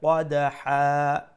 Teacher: one zabar will go away we will stretch it to one alif long and we say qadaha like that however you can carry on · pronounce the dotted qaf with a fuller sound and dal will be pronounced with qalqala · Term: mad al-ibaz